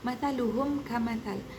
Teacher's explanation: Apabila mim mati bertemu dengan huruf hijaiyah selain huruf mim dan ba, maka wajib menjelaskan mim tanpa dengung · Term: izhar syafawi